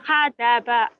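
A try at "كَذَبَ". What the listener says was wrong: Ini bukan H ya. Kamu tuh kadang-kadang itu tadi K-nya jadi H. H, ini K.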